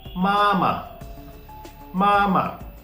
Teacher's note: when we spoke the first syllable M A with a first tone we dragged a while but in the second case we just spoke it · neither our voice was Rising neither was it falling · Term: neutral tone